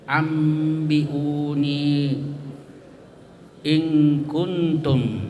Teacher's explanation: nun mati ketemu ba, nun mati ketemu kaf. Ya, cara membacanya itu disamarkan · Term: al-ikhfa al-haqiqi